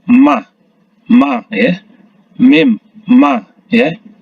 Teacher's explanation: Ketika kita menyebut huruf mim ya, bibir atas dan bibir bawah itu bertemu